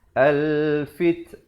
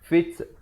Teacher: Ada hamasnya, bunyi anginnya.